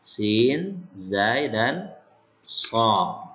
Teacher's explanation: Ujung lidah dengan rongga antara gigi atas dan bawah dekat dengan gigi bawah.